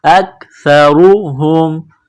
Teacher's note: کو کاف کے ساتھ ملانا ہے کاف کو باریک کرنا ہے سا کو نرم کرنا ہے زبان باہر نکالیں گے سا کو پڑھتے وقت